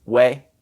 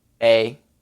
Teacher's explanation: the UI sound has like a small W attached to it its way whereas the e I just sounds like the a sound